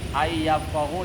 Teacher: yang harusnya dibaca an yafqahu dimasukkan ke huruf ya, namanya idgham biguna